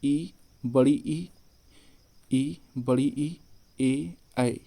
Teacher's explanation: जिसमें जिसमें ई है, ई वह अग्रभाग से बोला जाता है